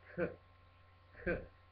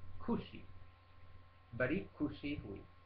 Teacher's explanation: viene pronunciato come il KH aspirato esplosivo